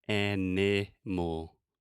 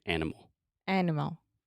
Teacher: the schwa occurs in that unstressed middle sound